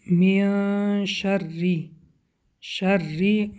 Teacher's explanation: حرف را باریک خوانده می شود به سببی که با کسره آمده است